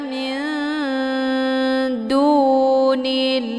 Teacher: Nun posisinya di ujung lidah, kemudian dal juga posisinya di ujung lidah. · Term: ikhfa aqrab